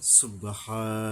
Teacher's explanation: সুবহান বইলে পরবর্তীতে চলে যাব, আর না হয় যদি এখানে থামি সুবহা একালি পরিমাণে টাইনে থামতে হবে, সুবহা। আর থামলে না থামলে পরবর্তী অক্ষরে সুবহান বইলা চলে যাব।